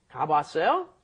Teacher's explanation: when you put two ahs up next to each other, one, of course, disappears because you can't pronounce together without a consonant in between.